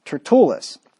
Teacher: the emphasis on the second syllable there